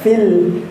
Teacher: fil itu lamnya bukan termasuk qalqalah nggih. Lamnya hanya sukun semata, maka kita membacanya fil.